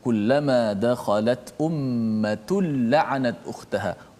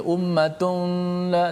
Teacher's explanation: tanwin tu dimasukkan dalam lam secara total. Maknanya tidak ada lagi tanwin nun tu. Ummatun dah tak ada dah. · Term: idgham tanpa dengung